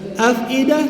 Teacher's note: makhraj ialah bibir bawah. Satu bibir aje. Bibir bawah bukan dua bibir. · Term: fa